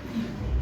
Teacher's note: The first pe is aspirated. The second one is not aspirated.